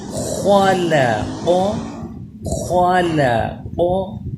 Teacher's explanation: خا زبر خا، لام زبر لا، خال خال، خا پر لام باریک، خال، قاف زبر قا، خال قا، خا بھی پر ہو قاف بھی پر ہو، لیکن درمیان میں لام باریک پڑھا جائے، خال قا۔ پھر غور سے سن کے پڑھیے، خال قا، خا اور قا ان کو میں پر پڑھ رہا ہوں، اور لا لا اس کو باریک، خا اور قا اس کو پر، اور لا اسے باریک۔